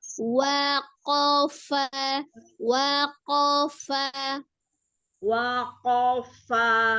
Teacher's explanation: fa-nya seperti meniup f ya. Ada al-hamsnya.